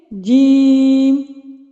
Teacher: جیم زیادہ کھینچا جا رہا ہے، ٹھیک ہے، کیونکہ یہ 3 حرفی ہے۔